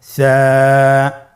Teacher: স্ক্রিনে দেখা যাচ্ছে। সা হরফটির মাখরাজ হলো উচ্চারণ স্থান জিহ্বার আগা সামনের উপরের 2 দাঁতের আগার সঙ্গে লাগিয়ে উচ্চারিত হয়।